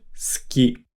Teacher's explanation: Notice how we don't really pronounce the ooh sound when we say ski. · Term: dropped vowel sounds